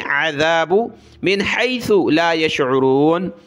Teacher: ज़ाल पर ज़बान निकालें